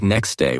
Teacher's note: For example, next day often sounds like next day without the T sound. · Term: dropped sounds